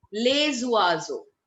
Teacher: That is called liaison. Liaison, carrying forward the sound of the previous word's consonant with the following word's vowel